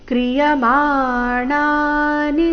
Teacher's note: ಮಾಣ ಎರಡು ದೀರ್ಘ ನಿ ರಸ್ವ